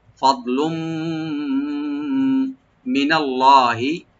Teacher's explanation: লামের উপরে যে তানবিন আছে, তানবিনের পরে মিম, এখানে এদগাম উইথ গুন্না হবে